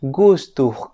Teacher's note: la G en fonética se le conoce como oclusiva velar Sonora la g suena como en el Castellano pero es un grafema